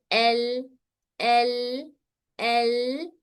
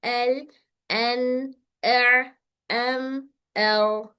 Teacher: ना आवाज रुक सकती है ना आवाज मुकम्मल जारी हो सकती है। जैसे एल एल एल यहां पर हमारा मखरज पे होल्ड हो रहा है लेकिन ज्यादा होल्ड नहीं हो पा रहा जिसकी वजह से आवाज बाहर निकल रही।